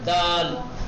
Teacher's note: زبان کے کنارے کو اوپر کے تالو سے جب ملاتے ہیں تو دال نکلتا ہے